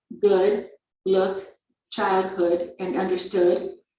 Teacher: the lips are very rounded and the tongue is relaxed the back of the tongue is raised and slightly higher than for the o